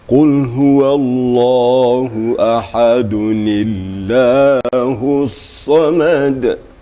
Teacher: Tanwin itu dijadikan nun gitu. Nun mati itu ditimbulkan. Ya. Sebab tanwin itu adalah nun mati yang tersembunyi di sana.